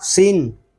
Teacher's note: سین کو باریک پڑھیں گے اور اس میں سیٹی کی آواز بھی نکال لیں گے